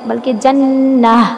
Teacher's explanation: ہا کی آواز سینے کی طرف سے آئے